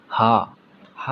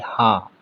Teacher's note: आप बोल के देखेंगे हा बोलेंगे तो आपका जो गला के जो पीछे है बीचों बीच में, वहाँ से आवाज़ निकलेगी